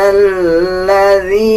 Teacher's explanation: لام کے اوپر شد ہے، مضبوطی کے ساتھ ادا کریں گے لام کو